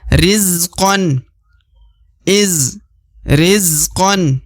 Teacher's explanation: Karena harokat an. Meskipun di depannya terdapat alif, tapi tetap harus dibaca 1 harokat.